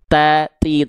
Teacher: kalau huruf ta keluar percikan nafas.